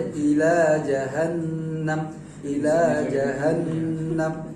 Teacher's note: jangan terlalu panjang karena cuma 2 harokat